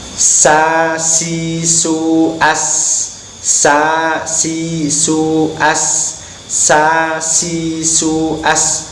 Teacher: Makhrajnya sin adalah ujung lidah di belakang ujung gigi depan atas dan bawah. Ada suara desis dan bibir harus melebar.